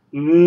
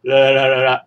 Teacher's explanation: 哋唔会讲一打鸡蛋嘅。t▁i▁a▁a▁i。个音我系读▁i，▁t▁i▁t，▁太太太呢个系太，太阳嗰个太，太太嗰个太。你见到太太都系两个太字嘅，但系头一个字就系读太，第二个字就系读太，我哋就会有太太，亦即系内子，即系我嘅夫人咁嘅意思。a▁a▁m▁呢个韵母我哋就读。啱，而呢个声母我哋读▁n▁n▁啱啱，而第五声亦即系啱啱啱啱啱，呢个就系牛啱，唔系牛啱，唔系牛啱，系牛啱，呢个系第五声嚟嘅，阳虚声▁l▁o▁l▁o▁l▁o▁l▁o▁l▁o▁l▁o，▁呢个系留学嘅留，留班嘅留。就是第四音阳平声啦▁，l▁o▁l▁o▁l▁o▁l▁o▁l▁o▁l▁o，▁所以我哋睇到▁d▁t▁n▁l，▁ 记住▁n▁音系鼻音嚟嘅▁n，▁而▁l▁音系脷音嚟嘅 ▁，l▁l▁l▁l▁系条脷转嘅声音，所以就会有▁d▁t▁n▁l，▁头呢八个嘅声母，大家会有个感觉。同普通话国语头嗰八个声母系基本